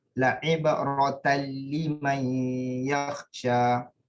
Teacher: Sebab dia tanwin bertemu lam tidak perlu didengungkan. Diidgham bila gunnah tanpa dengung.